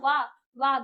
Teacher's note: जो हमारे दांत है वो हमारे लिप्स को टच करेंगे